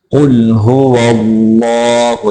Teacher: लफ्ज़ अल्लाह को मोटा करके पढ़ेंगे